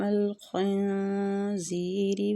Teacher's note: زی سختی اور سیٹی کے ساتھ آگے یامد ہو رہا ہے، زی کو کھینچیں گے۔